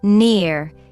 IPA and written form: nɪər (near)